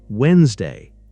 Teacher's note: Wednesday becomes Wednesday. The first D is silent.